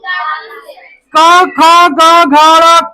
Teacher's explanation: क ख ग घ कंठ से होता है।